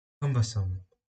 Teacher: The word cumbersome has 3 syllables. The stress is on the first syllable.